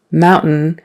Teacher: And then the next one, mountain, is where your tongue goes up, but really no sound kind of comes out